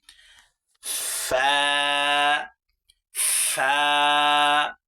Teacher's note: নিচের ঠোঁটের পেট সামনের উপরে 2 দাঁতের আগার সঙ্গে লাগাইয়া একটি হরফ উচ্চারিত হয়